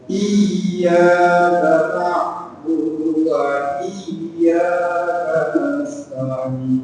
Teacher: Jadi tekan dulu ke huruf iya-nya, baru fathahnya.